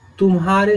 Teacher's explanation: यहाँ हम देखेंगे कि म और ह पर शीघ्र संक्रमण या गमन होता है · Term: संगम